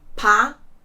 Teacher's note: There are 3 syllables in this word, and the second one is stressed. Погода. And the important note here that the first letter O, we will pronounce it as A, because it's not stressed.